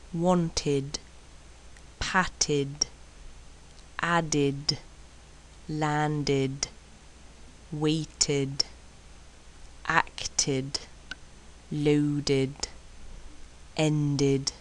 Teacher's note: after a T and A D it becomes like an ID sound